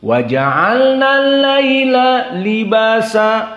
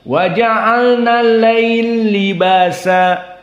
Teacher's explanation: Dimasukkan laila lam pertama kepada libasa. Jadi kasroh. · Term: idgham al-kabir